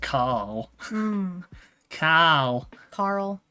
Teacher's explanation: because in australia we don't say the r sound